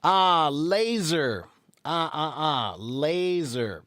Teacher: laser is spelled with an S, but it's pronounced with a Z.